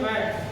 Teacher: इनका उच्चारण स्थान होठ है, बिना होठ को आप सटाए बै नहीं बोल सकते